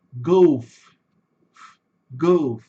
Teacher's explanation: Esse F, ele é assoprado.